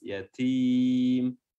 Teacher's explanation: huruf ta-nya juga memiliki sifat hams